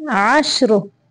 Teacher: रा को साकिन करते हुए रा की आवाज़ को थोड़ा पुर करेंगे क्योंकि रा साकिन उससे पीछे जो लफ्ज़ है वो भी साकिन है और उसके पिछले लफ्ज़ के ऊपर ज़बर है, इसलिए।